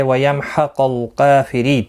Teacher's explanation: حا وسط و حلق والا ہے، اس کو ادائیگی کا خاص خیال رکھیں. میم ساکن کے بعد حا آیا، اظہار شفوی ہوگا. کاف کے اوپر کھڑی زبر ہے، ایک الف کی مقدار کے برابر کھینچ کر پڑھیں گے. · قاف حروف مستعلیہ ہے، پر پڑھا جائے گا. حا وسط و حلق والا ہے، اس کو ادائیگی کا خاص خیال رکھیں.